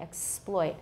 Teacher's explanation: The stress is on the second syllable, ploit, or sploit, exploit. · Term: word stress